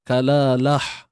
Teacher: kita matikan ta ini dengan bunyi ha simpul, bukan ha pedas.